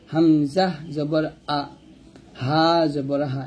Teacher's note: হামজা হা হলকের শুরু থেকে উচ্চারণ করব